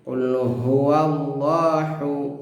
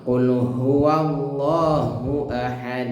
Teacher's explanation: Nah, kami ingatkan lafaz Allah setelah pada lafaz Allah Allahu. Nah, hu-nya Allah itu tebal ya, di sini ha besar ya, di pangkal tenggorokan. Jangan sampai dibaca tipis.